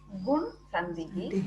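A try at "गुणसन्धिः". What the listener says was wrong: Not Gun. Read properly.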